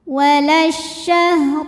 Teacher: huruf ra dibunyikan secara tafkhim karena berbaris fathah, maka dibacanya tebal.